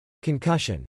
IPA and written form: kən-ˈkə-shən (concussion)